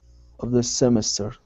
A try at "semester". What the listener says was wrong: Instead of semester, it's semester. The stress is in the middle.